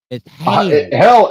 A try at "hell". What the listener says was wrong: Hell is a single syllable word. Her version is a polysyllabic word. It's hail.